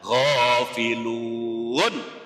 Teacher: Kemudian ghafiluna karena wakaf, karena berhenti dimatikan, ghafilun. Hukumnya namanya mad aridis sukun.